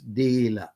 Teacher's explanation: on all vowels except schwa however in the philippines it's deila it's got a long vowel it's accented on the first syllable